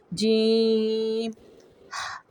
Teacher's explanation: زبان کا درمیان والا حصہ اوپر تالو سے لگے گا، منہ کھلا رہے گا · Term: جیم تالو